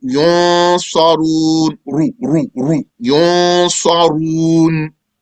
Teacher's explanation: it's going to be heavy when the ra has a dhamma